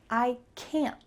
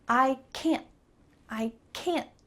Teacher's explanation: This is called a stopped T, which means that your tongue is going to be at the top of your mouth, making that T shape, but you're not going to let a puff of air through